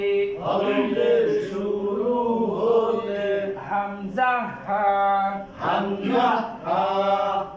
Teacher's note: এক নাম্বার মাখরাজ হলকের শুরু হতে